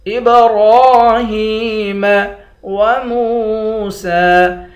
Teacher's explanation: را کو ایک الف کی مقدار کھینچ کر پڑھیں گے،